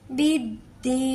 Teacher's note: یائے مدہ کو 1 حرف کے برابر کھینچ کے بھی ادا کریں گے